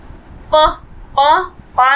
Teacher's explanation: सिर्फ हमारे जो लिप्स है, हमारे होठ है वो आपस में मिलते हैं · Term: ओष्ठ